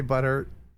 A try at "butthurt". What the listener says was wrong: Yeah, but the difference is we have syllables, whereas you don't. So it's actually butt hurt. Butthurt.